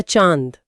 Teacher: जब अनुनासिक यानी चंद्रबिंदु का प्रयोग होता है तो हवा नाक से कम निकलती है और मुख से ज्यादा निकलती है